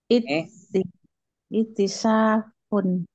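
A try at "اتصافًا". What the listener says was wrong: Pakai sod, jangan sin. Sod. Jangan ita. Kalau ita maudinya. Ita sofa. Yattasifu. Ittisaf.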